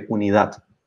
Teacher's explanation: It's a D at the end. And we stress the last syllable.